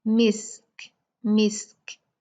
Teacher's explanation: اور کاف، کاف کو کیونکہ ہم ساکن کر رہے ہیں، کاف میں بھی ہمز کی کوالٹی ہے، ہوا کی کوالٹی ہے، یہ دونوں میں ہم ہوا کو ظاہر کریں گے